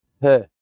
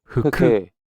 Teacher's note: We're saying hu with a with a soft f at the start of that. Hu. To say it to get that breathiness there.